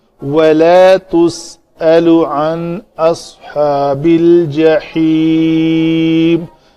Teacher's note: نون ساکن کے بعد حمزہ ہے تو یہاں پہ اس نون کا اظہار ہوگا، اس کی طرح اخفا نہیں ہوگا